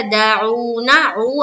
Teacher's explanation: عو عین نکالیں گے اور واو مدہ کریں گے